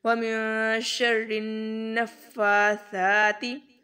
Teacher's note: فا اور سا دونوں کے اوپر کھڑا زبر اس کو لمبا کریں گے. · فا کے اوپر شد بھی ہے اور کھڑا زبر بھی ہے تو نفا فا دو بار پڑھا جائے گا شد کی صورت میں.